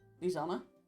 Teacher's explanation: even though you write an S, in speech you kind of say more of like a Z sound.